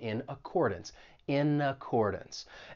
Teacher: we can link that consonant n and n with the vowel sound in accordance in accordance and keep in mind that final syllable in accordance